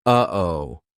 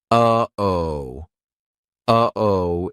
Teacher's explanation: That uh-oh is a perfect example of how to use the glottal stop. We aren't making the same mouth formation like we do for the true T, or even the held T. It's coming from our throat.